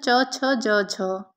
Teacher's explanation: निम्नलिखित में कौन सी व्यंजन ध्वनियां स्पर्श संघर्षी कहलाती है तो च छ ज झ